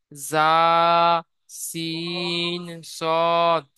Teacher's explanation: জীবের আগা এবং সামনের উপরের এবং নিচের দুই দাঁতের আগার সাথে লাগিয়ে উচ্চারিত হয় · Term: 13 নম্বর মাখরাজ